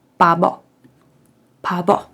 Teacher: в першу чергу ми читаємо її як глуха п далі по слову як дзвінка б